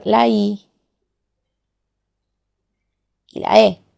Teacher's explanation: anterior de qué del paladar por lo tanto aquí y aquí es decir la lengua se moviliza hacia la parte anterior del paladar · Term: anteriores